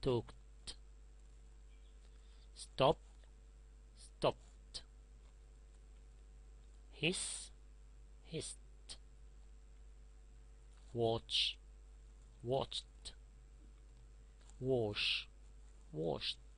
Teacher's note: So if you have a voiceless sound, when you add ed, it pronounces like t.